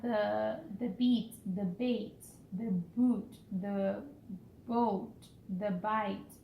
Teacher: The 7 long vowels of English are all made by starting with a vowel and adding a glide. The tongue moves from one part of the mouth to the other, also called diphthongs, from the Greek roots meaning 2 sounds.